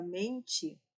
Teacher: na palavra mente, este N aqui, ele está trazendo uma nasalidade para a letra e, para este primeiro e então ali nós temos um como se tivéssemos um tio, só que no lugar de colocar um tio, vamos colocar um N.